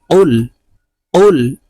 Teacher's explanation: কফ জিহ্বার গোড়া থেকে উচ্চারণ করতে হবে